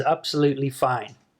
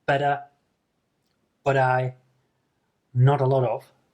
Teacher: T voicing, which means that you actually pronounce a T sound as a very short D sound.